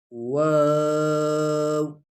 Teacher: یہ بھی ہنٹوں سے ادا ہوتا ہے، ہنٹوں کو گول کر واو